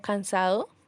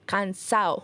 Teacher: se conserva rigurosamente la terminación ado como cansado evitando la eliminación de la de